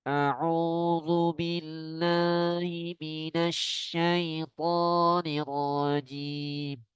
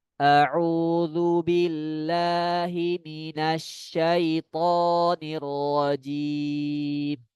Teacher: Yang benarnya bacaan yang masuk ke hidung hanya di dua tempat. Ya, ini di huruf mim dan nun.